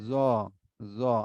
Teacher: আর এই জ হবে কি জিহ্বার আগা, উপরের দাঁতের আগার সাথে। উপরের দুই দাঁতের আগার সাথে।